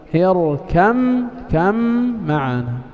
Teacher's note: Nah, المخرج الثالث مخرج الباء مع الميم. الباء والميم كلاهما يخرج من طباق الشفتين، إذن اتحاد واتفاق في المخرج متجانس، ويجب الإضغام في موضع واحد. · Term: الباء في الميم